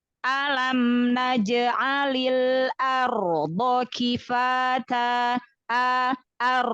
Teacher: A-nya hamzahnya ditipiskan dulu sebelum ro-nya tebal.